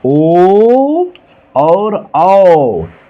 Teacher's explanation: चलिए कंठोष्ठ, कंठ प्लस ओष्ठ, कंठ और ओष्ठ माने कंठ द्वारा जीभ और ओठों के कुछ स्पर्श से बोले जाने वाले शब्द कंठोष्ठ कहलाते हैं।